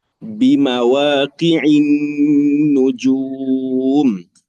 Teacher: huruf ain baris bawah tu jangan tergelincir e bunyi e lah